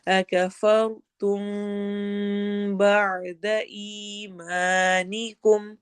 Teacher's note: یہاں پہ ہم نے میم کی آواز کو چھپا کے پڑھنا ہے، اخفا شفوی ہو رہا ہے.